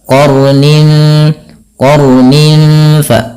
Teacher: Tapi takrirnya jangan banyak-banyak jangan qarnin. Sekali saja untuk sifat takrir daripada huruf ra dan dia menebal. · qornin di sini qon-nya tebal dan ron-nya juga dibaca dengan tebal · sifat huruf ra itu sifat takrir, tapi takrirnya jangan banyak-banyak